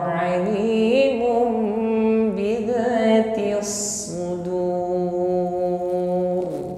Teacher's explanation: hukum iqalab membalik atau merubah apa yang dirubah Al Mun ya maka Mun di sini kita rubah menjadi mim ya bibir rapat dan sempurnakan bunyi